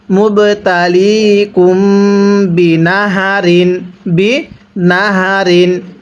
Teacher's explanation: মিম সাকিনের পরে বা গুনাহ করতে হবে